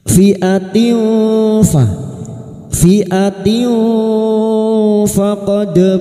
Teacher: Ila fi'atin fa, tak marbuta yang berharokat kasrotain, kasrot tanwin bertemu fa, ikfa hakiki. Kita samarkan bunyi kasrot tanwin dan mendengung selama 3 harokat. Pada saat menyamarkan bunyi kasrot tanwin ini, kita sudah siap-siap untuk membunyikan huruf fa.